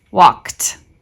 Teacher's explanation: this Ed is telling us that this is a past tense form of walk but because of the sound that came before it it just sounds like T walked and it does not make a new syllable walked is